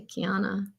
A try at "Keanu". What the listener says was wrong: Keanu. You're forgetting the O. Keanu. There's a U at the end, but it's...